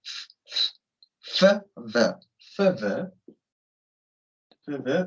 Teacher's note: 이 윗니랑 아랫입술을 이용해서 나는 소리죠.